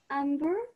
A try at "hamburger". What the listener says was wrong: Ham. Ham. La H. Ham. No te olvides que la H en English tiene un sonido como ham. Casi como una J.